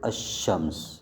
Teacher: تعریف کے بعد حروف شمسیہ آ جائیں، الشمس، الشمس، الشمس تھا، لام کو شین کی جنس میں تبدیل کیا جائے گا اور اس کو آپس میں ادغام کر دیا جائے گا